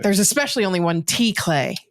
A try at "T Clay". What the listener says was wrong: The T is silent though.